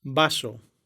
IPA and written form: ˈba.so (vaso)